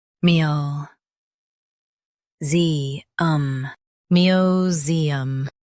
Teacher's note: Emphasize ze and keep um soft.